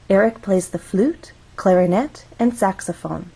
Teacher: flute has one syllable so we only have one syllable to make our voice glide up · we're listing information Eric plays three instruments one two three when we have a list we use rising intonation in each phrase until we get to the final item of the list · when we are listing items, one possible pattern is to use rising intonation in each phrase until we get to the last one. In this case, it's saxophone. · until we get to the final item of the list so we're actually going to go up on flute then we'll go up again on clarinet this is our final item in the list so we're going to go down